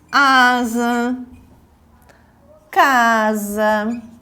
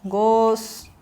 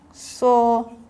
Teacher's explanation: esse S ele vai ter som de Z quando ele estiver sozinho, né, entre duas vogais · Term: S com som de Z